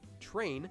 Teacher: the English word train is actually pronounced with a ch sound, although it's spelled with tr